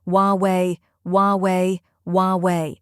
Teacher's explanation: the H is silent so you start with W the second syllable is we just like the word we think